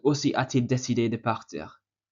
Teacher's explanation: Now, note that we've used a T between a and il, so a coming from the verb avoir. The reason there's a T is because when the verb ends with a vowel, it wouldn't sound correct to say aussi a il. So just to make the pronunciation better, you're meant to add a T.